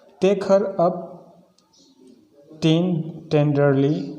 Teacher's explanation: टेक हमारा stress है, हर unstress, अप भी हमारा अनस्ट्रेस है, टेन स्ट्रेस है और डर अनस्ट्रेस · इसमें पहला syllable हमारा जो होता है वो स्ट्रेस होता है, but the other 2 are unstressed, लेकिन अन्य दोनों अनस्ट्रेस होते हैं। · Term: डेक्टेल